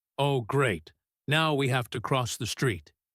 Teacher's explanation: The tone of his voice drops because he is annoyed.